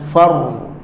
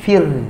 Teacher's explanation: Ra tebal. Far. Kalau nipis fir.